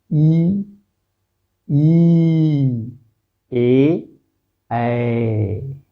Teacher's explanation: जैसे देखिए ई, मुंह देखिए कैसे बन रहा है, ई ए, एकदम जीभ और दंत यानी सामने से ऐसा लग रहा है कि हमारे दांत और जीभ के सामने से ये स्वर निकल रहे हैं, इसलिए इन्हें अग्र स्वर कहा जाएगा।